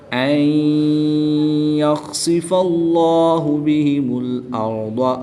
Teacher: را ساکن سے پہلے حرف پر زبر ہے، اس لیے را کو پر یعنی موٹا پڑھیں گے۔ ضاد حرف مستعلیہ میں سے ہے، اس لیے ضاد کو پر یعنی موٹا پڑھیں گے۔ یاد رہے دال اور ضاد ان کی ادائیگی میں فرق ہے، تو ان کی ادائیگی میں فرق واضح کریں گے۔